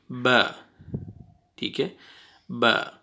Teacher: lips अंदर वाली side जो तर रहती है जगह, वो आपस में मिलाएंगे दोनों लिप्स को तो बा अदा होएगा